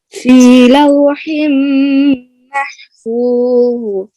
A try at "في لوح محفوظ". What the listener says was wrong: غنہ بھی ہے میم کے اوپر اور بعد میں ضا کو فل پر کرنا ہے اور حا کو بھی کلیئر کریں. 2 دفعہ حا آ رہی ہے. فی لوح محفوظ. آخر ضا میں قلقلہ نہیں کرنا.